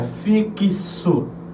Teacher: esse X Ele vai soar como se fosse um KS ou seja fixo então eu passo nessa palavra a ter mais